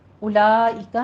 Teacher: اولئک میں مد متصل واجب ہے، 5 کاؤنٹ کرنا ہے